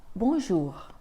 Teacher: le r final dans ces cas-là on va l'entendre un peu comme quand tu fais des gargarismes